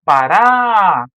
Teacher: nós já sabemos que ela é uma oxítona, porque a tônica é a última